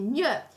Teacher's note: il nesso gn si pronuncia come una nasale palatale